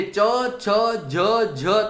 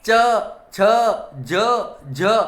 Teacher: તો ચ, છ, જ અને જ આ જે વ્યંજન છે એ વ્યંજનને તાલવ્ય વ્યંજન કહેવામાં આવે છે, કારણ કે જીભનો જે અગ્રભાગ છે એ ઉપરના તારવે સ્પર્શ કરે છે એટલે તાલવ્ય બને છે